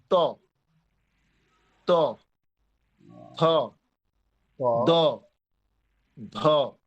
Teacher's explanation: জিভের ডগা দাঁতের সাথে লেগে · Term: দন্ত বর্ণ